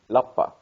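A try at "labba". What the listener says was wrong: Yes, but with a B. With two B's.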